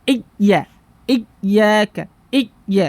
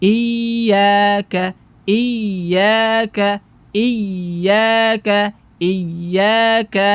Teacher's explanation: menghilangkan sifat dari huruf ya tersebut yaitu sifat rakhawa mengalirnya suaranya